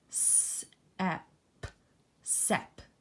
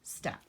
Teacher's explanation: We need st, ep, st. We're missing the t sound. So we need to make sure, I'm going to kind of squeeze it in here, that we include the letter T in the word step, step.